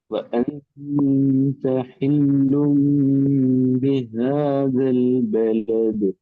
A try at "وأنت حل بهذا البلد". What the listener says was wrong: بلد தால கலக்கணும்.